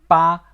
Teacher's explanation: B in Pinyin is pronounced ba with both lips together, creating a soft and gentle sound. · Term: B in ping e